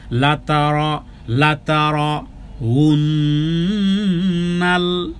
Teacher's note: লাতারকে আমি রকে মোটা করেছি